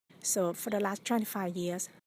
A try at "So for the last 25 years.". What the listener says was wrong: Again, we need to look at exhaling on both the S and the V and not cutting off or holding your breath.